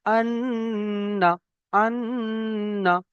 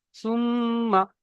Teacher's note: তাহলে নুনটাকে এক আলিফ পরিমাণ গুণনা করে পড়তে হবে।